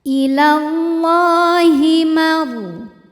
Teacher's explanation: Allah hukumnya adalah mad tabi'i muqaddar sebab ada harokat fathah panjang di atas huruf lam. Maka cara bacanya lam ini dipanjangkan 2 harokat saja.